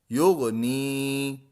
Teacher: نی کو ہم کھینچیں گے، ایک الف یعنی دو حرکات کے برابر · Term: یا مدہ